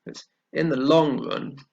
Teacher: the word that takes the stress here is long